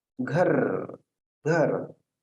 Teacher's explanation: अब यह घर, इस शब्द का उच्चारण करते समय आपने किस वर्ण या अक्षर पर बोल दिया, तो निश्चित रूप से घर। तो यहाँ घ पे आपने विशिष्ट बल दिया, उस पर अधिक आपने बल दिया। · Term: बलाघात